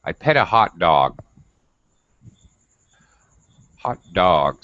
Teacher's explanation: your pitch or your tone would rise a little bit then of course it's going to fall at the very end simply because you're at the end of a sentence and that's · so you're rising up and then you have a little curl and you get lower at the end because you're making a statement that's final falling intonation